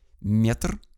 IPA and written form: mʲetr (метр)